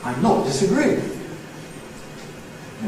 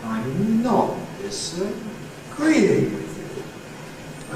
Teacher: A Fall-Rise Nucleus on ‘˅not’, ‘I’m ˅not’, which spreads out onto the ‘disa-’